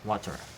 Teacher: In American English, T become R in words like water. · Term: flapping